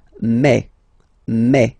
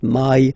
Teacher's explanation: Remember when you combine this a and then e vowels you get the sound e. So really open e.